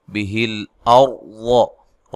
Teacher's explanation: را کو موٹا ادا کرنا ہے، لام کو ہلانا نہیں ہے